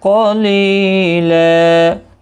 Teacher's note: تنوین کو بدل کر ایک زبر کے ساتھ وقف کریں گے، وقف بالابدال ہوگا، ایک الف کی مقدار کے برابر کھینچ کر پڑھیں گے. اور ملانے کی صورت میں یہاں پر تنوین کے بعد یرملون کا یا آیا ہے، ادغام مع الغنہ ہوگا.